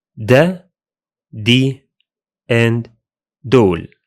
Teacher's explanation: in Egyptian Arabic, the initial ha disappears, resulting in da, di, and dol.